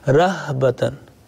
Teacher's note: this ha should come from the bottom of throat.